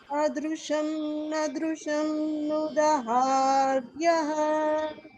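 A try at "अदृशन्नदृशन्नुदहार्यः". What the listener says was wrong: The only place where the swaras are going off is in the first adrushan.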